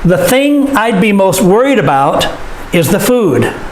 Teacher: thing worried food these are the important words of the sentence and so we stress them